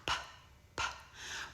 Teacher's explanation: And then we're going to ask them to put their fingers on their voice box and say the sound p. There is no vibration in our voice box, so the sound is unvoiced. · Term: unvoiced sound